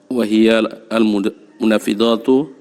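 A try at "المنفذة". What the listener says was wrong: tidak panjang Pak, nanti berubah artinya itu. Bukan al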